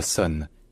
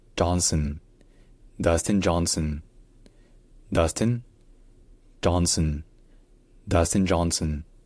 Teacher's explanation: C'est un N qui est prolongé suffisamment pour qu'on n'ait pas à prononcer de vraie voyelle. Donc ce n'est pas son, c'est sun.